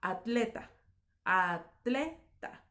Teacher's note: en la mayor parte de los países hispanohablantes se pronuncia en una misma sílaba